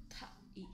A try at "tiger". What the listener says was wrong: 타 이가 아니고 타이